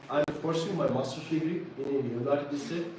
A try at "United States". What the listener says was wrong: United States. A lot of you are just saying United States. Is that correct? United States has an S on it, right? United States. It's one is a state. But you have 50 states, right? And so they are the United what? States. States.